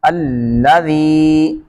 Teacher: زال میں سیٹی نہیں ہوتی · یا کو کھنچیں گے اور زال میں سیٹی نہیں آنے دیں گے